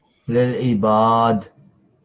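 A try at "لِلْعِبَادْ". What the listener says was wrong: Yep, very good.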